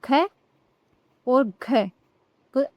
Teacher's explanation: ख का उच्चारण करने पर देखो ह जैसी ध्वनि हमें सुनाई देती है। हवा निकलती है और अधिक वायु निकलती है। इसलिए यह महाप्राण व्यंजन होते हैं।